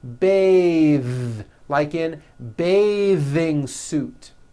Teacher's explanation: Bath. But when you change it into a verb, to bathe, the vowel changes to an A sound and the TH is voiced.